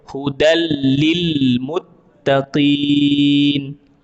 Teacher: maka bacaannya kita baca seolah-olah dia ada dua huruf lam di situ. Satu hurufnya dia huruf yang sukun, hudal.